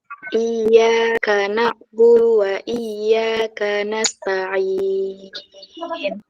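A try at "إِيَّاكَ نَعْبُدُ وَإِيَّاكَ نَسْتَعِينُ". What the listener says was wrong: Ambil sedikit lagi, kurang panjang dikit. Coba ulang.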